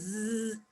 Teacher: We bring the blade of our tongue against alveolar, and we say zzz, and there is a friction, audible friction, fricative sound.